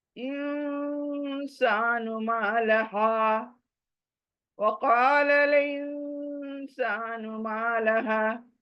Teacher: نون کے بعد سین آئی تو نون ناک میں جائے گی